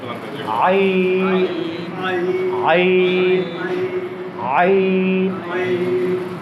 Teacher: আইন কোত্থেকে উচ্চারণ করছি? এই যে কণ্ঠনালীর মধ্যখান থেকে।